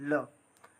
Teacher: ल जो है इसे पार्श्विक व्यंजन भी कहा जाता है